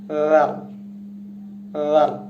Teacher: এই হরফটি উচ্চারিত হয় জিহ্বার অগ্রভাগ এবং সামনে দুই দাঁতের অগ্রভাগ থেকে উচ্চারিত হবে।